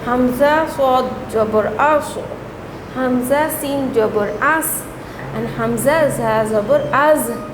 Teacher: the tip of the tongue and the tip of the 2 teeth of the lower frontal teeth and a little bit of the upper teeth are used to pronounce 3 letters